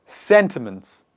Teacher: The stress is on the first part, in the initial part of the word.